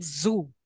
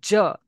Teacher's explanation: Zoo comes under fricative, j comes under affricate. J because you hear also, here it is total occlusion, that is total stoppage, j.